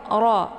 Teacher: Cara bacanya ujung lidahnya terangkat ke langit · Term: tafkhim